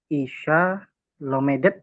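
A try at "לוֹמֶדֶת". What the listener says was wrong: Lomedet, betul.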